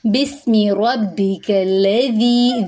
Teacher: ذی پہ یا مدہ ہے، ایک الف کے برابر لمبا کریں گے